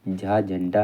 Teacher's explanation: तालव्य महाप्राण घोष वर्ण का उदाहरण